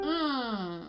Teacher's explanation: your tongue is up in the back closing off the back of your mouth this just helps you not blast air through your vocal cords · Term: ng sound